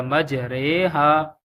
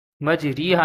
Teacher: پھر اس کے بعد امالہ، زبر کو زیر کی طرف اور الف کو یا کی طرف مائل کر کے پڑھنے کو امالہ کہتے ہیں۔ امالہ کی را کو اردو کے لفظ قطرے کی را کی طرح پڑھیں، یعنی ری نہیں بلکہ رے پڑھیں گے۔